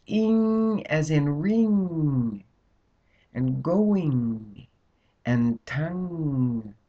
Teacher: the tongue pushes that sound up so that it comes out through the nasal passages.